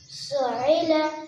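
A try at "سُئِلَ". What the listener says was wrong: عین ہے یہ. آپ حمزہ کو عین کر رہے ہو. یہ عین ہے. سئیل. سئیل. زور سے. سئیل.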